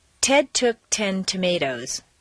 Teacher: at the top of a staircase in a stress position it should be a clear popped sound